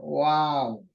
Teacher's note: नीचे के होठ को लगाते ी साउंड वाव यह गलत है वाव होटों से आवाज इसकी आनी चाहिए